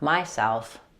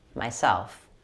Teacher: For the word myself, make sure you stress self rather than my, not myself, myself.